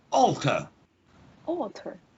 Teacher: even though it begins with an a we don't use the schwa at the beginning we use the op sound if i show you on my